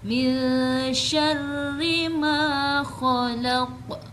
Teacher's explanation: khalaq bukan dipanjangkan tetapi tetap dibaca pendek ketika waqaf dengan dipantulkan karena hurufnya adalah huruf qalqalah. Khalaq bukan khalaq.